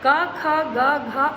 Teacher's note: अगर आप व्यंजन को बोलकर देखिए, जैसे आप बोलिए का, देखिए गले में टच कर रहा है, लग रहा है ऐसे गले को टच कर रहा है हमारा, कुछ हवा जो निकल रही है उसे का, ख, सब गले से निकल रहा है, ग, घ। तो ये हैं आपके कंठ से उच्चारण करने, गले से उच्चारण होने वाले स्वर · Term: स्पर्श व्यंजन